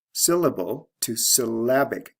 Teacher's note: Notice the stress shift from first syllable to second syllable. We have LE to IC ending plus the sound change.